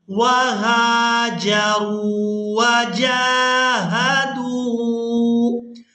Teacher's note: را کو واو مدہ کی وجہ سے، دال کو بھی واو مدہ کی وجہ سے کھینچ کر ادا کیا جائے گا